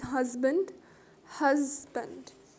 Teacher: you can feel the stress is on the first syllable